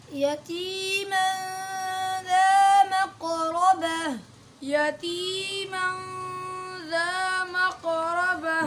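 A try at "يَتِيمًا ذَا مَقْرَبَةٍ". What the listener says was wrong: दोबारा पढ़े, इख्फा को मोटा नहीं करें, म गलत है। यतीम,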